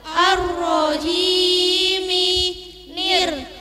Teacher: ro tasydid dibaca dengan getaran yang halus tidak sampai terlalu polos. Jim dengan menahan desisan angin.